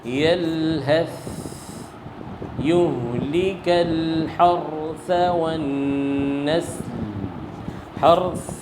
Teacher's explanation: تو سا کی آواز کیا ہوگی؟ جاری رہے گی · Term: صفت ہمس